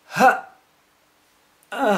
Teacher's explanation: that's me closing my vocal cords closing my glottis closing off the air and no more airs coming out but here they're open so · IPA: [ h ...... ? ]